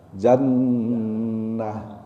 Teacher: Ini kalau disambung bacanya jannatun naim, ada taknya. Tapi kalau dia berhenti, maka taknya hilang, diganti dengan ha, hanya ha besar. Jannah. Karena ada tasdid di sini, nun tasdid, ada guna. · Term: tak marbutoh